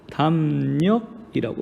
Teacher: 리을에 해당하던 소리가 니은 소리로 바뀌었습니다. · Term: 비음화